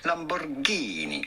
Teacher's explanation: You do want to insist on the Ghini part.